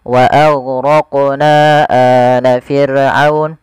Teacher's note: Panjangnya empat harakat atau lima harakat. Tidak boleh dikurangi. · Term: mad jaiz